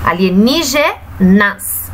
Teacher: a sílaba tônica da palavra alienígenas é a sílaba ni